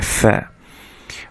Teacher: ফা বলতে সময় বাতাস বের হবে এবং উপরের পাটির দাঁত নিচের ঠোঁটের মাঝখানের সাথে লেগে উচ্চারিত হবে